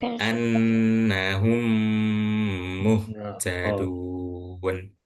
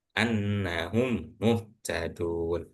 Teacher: Anggaplah di sini ada dua mim. Ya memang ada dua mim sih. Jadi maka karena kejadian ini harus dibaca lebih lama. Jadi enggak boleh annahum muhtadun. · Jadi seakan-akan idgam, ingat idgam itu masuk ya seakan-akan langsung ee seakan-akan mim yang pertama ini enggak pernah dibaca. Langsung ke huruf yang mim kedua. Cuma ingat harus dibaca dengung. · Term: idgham mimi